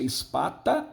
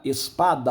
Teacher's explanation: Quando o T vira D, um fonema surdo se transforma em sonoro. Houve uma sonorização, certo?